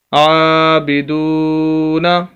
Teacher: عابدو، نون زبر نہ، عابدون، عین کو بھی لمبا کرنا ہے کھڑی زبر کی وجہ سے، دال کو لمبا کرنا ہے واو مدہ کی وجہ سے۔